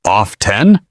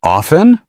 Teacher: Some native speakers pronounce the T. Others don't.